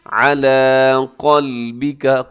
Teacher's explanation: قلبے کا نہیں پڑھنا آپ نے، عَلَىٰ قَلْبِكَ، قاف موٹا رکھیے گا۔